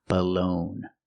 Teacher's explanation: The second syllable is stressed. It's the long O, like no and go. Balone. And the G is silent.